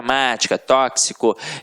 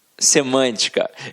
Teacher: são proparoxítonas porque a sílaba tônica tá na antepenúltima sílaba e quando isso acontece a gente acentua-se a pronúncia é fechada